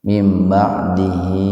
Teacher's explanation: Jadi huruf H didahului oleh huruf hidup. Jadi dibaca panjang 2 ketukan. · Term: mad silah qasirah